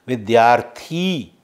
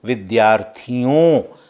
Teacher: विद्यार्थी, यहाँ दीर्घ ध्वनि है, लेकिन विद्यार्थियों में लघु ध्वनि का उच्चारण हुआ है।